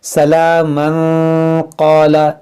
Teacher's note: अगर आपकी सांस लंबी है, मिलाकर पढ़ना चाहते हैं तो मिलाकर पढ़ सकते हैं, लेकिन जब मिलाकर पढ़ेंगे तो तनवीन के बाद क़ाफ हुरूफ इख्फ़ा है तो फिर इख्फ़ा करेंगे